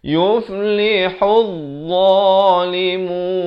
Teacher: Makhraj dha ni di hujung lidah.